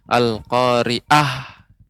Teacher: pengucapan ain al-qari'ah ya, lebih dilembutkan lagi sehingga tidak terkesan pengucapannya menjadi huruf alif